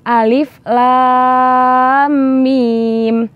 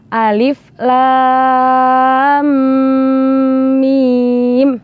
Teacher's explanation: Dan mim sukun bertemu mim itu namanya bacaan idgham misli, sehingga setelah kita menuntaskan huruf lam tidak langsung beralih ke huruf mim, tetapi harus didengungkan terlebih dahulu. Sehingga cara membaca yang benar adalah Alif Lam Mim.